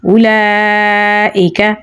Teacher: اوپر مد ہے اور مد کے فوراً بعد حمزہ ہے تو یہاں پر مد منفصل ہوگی. 3 سے 4 سیکنڈ لمبا پڑھیں گے. کاف کو باریک پڑھیں گے تو پڑھا جائے گا اولئک.